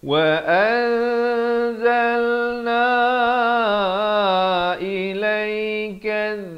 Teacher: Ikhfa di sini daripada wa an, hamzah baris atas bertemu nun an jadi bertemu zai jadi an, disamarkan di antara nun dan zai kadar panjang 2 harakat